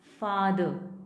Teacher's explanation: अब इसमें भी र would be silent because it is followed by, it is preceded by vowel sound. इससे पहले वॉवल साउंड आ रही है तो हमारा आर र would be silent. का, फा, का, फादर, जो यहाँ है ना ये आ की साउंड, उसके लिए हमारा सिंबल ये होता है।